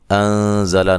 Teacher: انزل نون ساکن کا اخفا مع الغنہ ہے، باریک اخفا ہے، زا کو زور سے ادا کریں گے، سیٹی سے ادا کریں گے